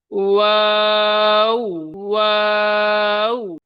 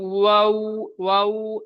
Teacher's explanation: দেখেন ওয়াও, আমার মুখের দিকে দেখবেন, ওয়াও, ওয়াও, কেউ ওয়াও ওয়াও এরকম হবে না, ওয়াও পুরো ঠোঁট গোল হবে।